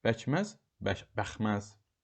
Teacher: K səsi sözün ortasında işlənərsə, hər iki tərəfi incə saitli sözlərin əhatəsində olarsa, K X kimi tələffüz ediləcək.